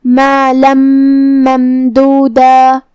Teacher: ہم یہ تنوین کو میم میں ملا کے غنہ اور تشدید کے ساتھ یہ حکم کو ادا کرنا ہے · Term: ادغام